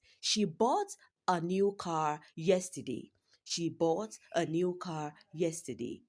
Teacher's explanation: Bought here is stressed. It's a verb. That is she didn't sell. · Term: sentence stress